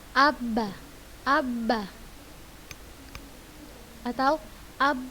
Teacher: Maka kita akan mendapati suara ba keluarnya dari dua bibir.